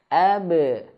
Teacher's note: Pantulannya untuk qalqalah ba ya, ke e pantulannya. Ab. Dan ingat qalqalah itu jangan sampai dia tertahan.